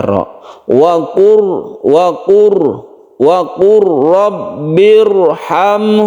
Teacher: itu artinya apa yaitu idgham itu artinya masuk ke huruf berikutnya lam ini dileburkan ke huruf ro sehingga di sinilah timbullah tasydid sehingga kita tidak membaca Lam lagi kita langsung membaca rokur wakur robbirham itulah yang disebut dengan Idgham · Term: idgham mutaqaribain